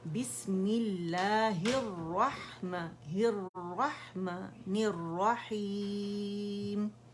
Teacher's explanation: बी English letter बी आएगा, मी आएगा, ही आएगा, नी आएगा। और रा मुशद्दद दोनों जो है उसमें हमने जमाव देना है